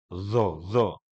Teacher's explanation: Tidak kolkolah, tapi lepas. Bacaannya, nafasnya tidak tertutup seperti dot.